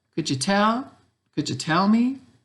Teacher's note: The first question is a yes/no question, so it goes up at the end. · Okay, so short, short, long, short.